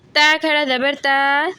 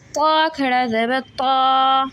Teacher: اچھا، یہاں پہ کمپیریزن ہو رہا ہے کہ اس کو ہم اور اس کو کیسے پڑھیں گے، جبکہ یہ جو تا ہے یہ باریک پڑھا جاتا ہے، جو طا ہے یہ موٹا پڑھا جاتا ہے